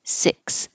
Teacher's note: the jaw is very high and the tongue is high, but not totally high. It'll sound like I.